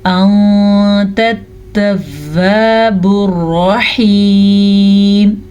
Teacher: نون ساکن کے بعد تا آ گئی ہے جو کہ حروف اخفا میں سے ہے تو نون ساکن کی آواز کو ہم چھپا کے پڑھیں گے اور کسی حد تک غنّے کے ساتھ بھی پڑھیں گے